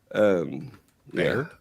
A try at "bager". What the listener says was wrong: Bager. No, you said bear. Bager. B-A-G-E-R. Bager. Or if you want to do it a little country, it's Bauer.